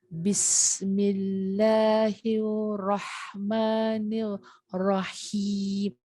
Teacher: Ba kat bibir, sin bunyi sofir, lillah bunyi nipis.